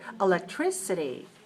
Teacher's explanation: electricity five syllables stress the third